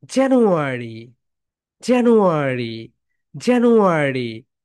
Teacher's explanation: প্রথমে ধাক্কা দিয়ে জোরে, তারপরে আস্তে বলো জানুয়ারি। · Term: স্ট্রেস